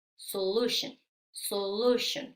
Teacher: Solution es una palabra de tres sílabas la acentuación va en la segunda sílaba